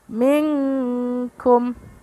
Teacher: nun sukun bertemu kaf termasuk ikhfa ab'ad atau jauh. Jadi dibaca minkum, samarnya mendekati huruf eng.